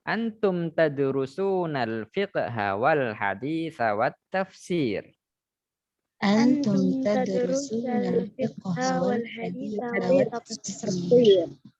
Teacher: Baik, di sini perlu diperhatikan huruf sa pada hadis itu pendek. Hati-hati, dihindari dibaca panjang.